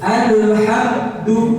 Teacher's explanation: suara mimnya langsung ada kesan saktah tau ya? Langsung terhenti. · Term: idhar syafawi